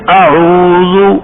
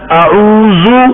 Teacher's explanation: اب زال کو زے کی طرح تیز پڑھنا سفیر کے ساتھ، ہاں جی یہ غلطی ہوگی. زال کو پڑھیں گے اعوذ، زال نرم.